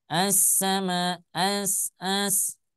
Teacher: ketika memasukkan huruf ke dalam huruf Sin itu tanpa menggunakan dengung tanpa menggunakan dengah eh dengah gunah ya misal saya mengucapkan assama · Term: idgam Syamsiyah